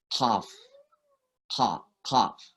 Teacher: Sebenarnya ujung lidah kita yang di dalam ya. Jadi pangkal lidah yang dalam, akar lidah kita